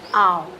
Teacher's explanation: That is a back rounded long vowel sound. So here while articulating we are taking some time, that's why they are called as the long ones, and when we are articulating this the lips are they are rounded up.